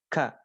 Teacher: ada sedikit hentakan Udara yang dikeluarkan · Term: hamas